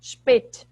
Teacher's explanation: o S, quando ele vem, por exemplo, antes de P ou T, ele tem esse som como se fosse um CH